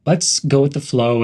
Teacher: stress the word flow